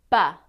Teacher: Your lips are together and then you release the sound with a burst of air. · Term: voiced sound